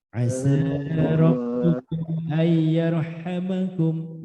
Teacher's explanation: Ayyarha itu nanti tafkhim